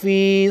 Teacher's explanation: فایا زیر فی کو ایک الف کے مقدار کھینچ کر پڑھنا ہے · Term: یا مدہ